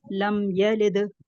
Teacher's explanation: साथ एक उसूल और भी बता दें, दाल जो है वो हुरूफ कलकला दाल में जो से है है, हुरूफ कलकला में से है, इसमें आखिर में कलकला होगा दाल का